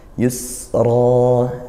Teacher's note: Yusro nah ini Mad iwad iwad artinya mengganti panjangnya karena mad mad itu panjang panjangnya satu Alif atau dua harakat